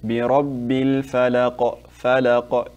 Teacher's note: when you stop on qafs, we make what's called qalqala, like it's an echo.